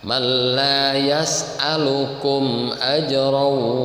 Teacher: Idhar jelas, syafawi itu karena apa, dalam termasuk dalam hukum mim mati. Mim itu huruf syafatain, 2 bibir, syafawiyun. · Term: idhar syafawi